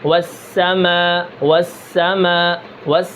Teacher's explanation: سین کے اندر حمز ہے، حمز کا کیا مطلب ہوتا ہے؟ یعنی آواز کے اندر پستی ہوتی ہے، والسماء والسماء سانس بھی جاری رہتا ہے۔